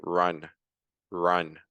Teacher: The tip of the tongue is not really doing anything in the r in English